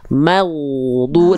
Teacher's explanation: Huruf ghair sukun tidak punya sifat qalqalah. Jadi tidak boleh ada bunyi vokal maghdu, tapi maghdu dialirkan suara huruf ghain.